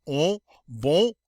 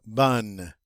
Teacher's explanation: Notice in the masculine it has a nice nasal sound, on, bon, but in the feminine no nasal sound, bonne.